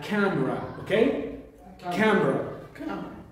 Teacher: it's a word having two syllables stress on the first one